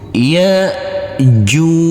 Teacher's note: maka huruf Jim wajib kita pantulkan karena ini adalah bacaan Qalqalah